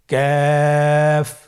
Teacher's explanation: কাফ উচ্চারণের ক্ষেত্রে অবশ্যই পাতলা করে উচ্চারণ করতে হবে এবং তিন আলিফ টেনে পড়তে হবে। · কাফের মাখরাজ আমরা স্ক্রিনে দেখতে পাচ্ছি। কাফের মাখরাজ হলো জিহ্বার গোড়া থেকে একটু আগে বাড়িয়ে তার বরাবর উপরে তালির সঙ্গে লাগিয়ে উচ্চারিত